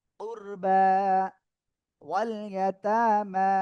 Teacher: এখানে এই যে খাড়া জবর রয়েছে, এখানে যদি আমরা থেমে পড়ি তাহলে এই খাড়া জবর এক আলিফই টেনে হবে। উরবা ওয়াল ইয়াতামা, যেখানে থেমে পড়ি না কেন এরকম জায়গা হলে সেখানে এক আলিফই টেনে পড়তে হবে।